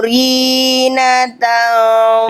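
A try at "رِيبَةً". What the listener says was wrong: titik di bawah apa? Titik di bawah ri apa nih? Riba, bukan Rina ya. Allazi, ya bukan Rina ya, riba.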